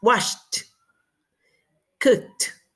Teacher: esta ed lo vamos a pronunciar como una T